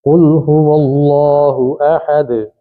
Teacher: دال پہ ہم رکیں گے تو قلقلہ ہوگا